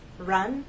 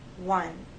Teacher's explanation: with r there's a gentle rounding of the lips but you hold that position until you get to the next sound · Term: the r sound